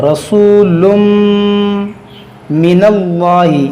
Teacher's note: تنوین کے بعد میم ہے, یہاں پر ادغام ہوگا · اس اللہ کے لام کو موٹا کریں گے, یہاں پہ اس سے پہلے زبر ہے.